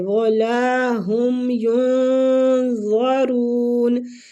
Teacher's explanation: مد کے ساتھ ہے، لام کو کھینچیں گے، ولا ہم ینظرون، ادھر نون ساکنہ کا اخفاء حقیقی ہوگا